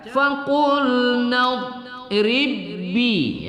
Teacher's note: idgham pada dua huruf yang sama ya tapi tidak berdengung